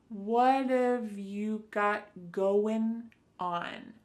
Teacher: Instead, you're going to hear a reduction or a contraction of the first two words, just like we saw with the previous example, what of. So what and have are going to be pushed together. · That final G in the word going is going to be cut off and we'll just say going.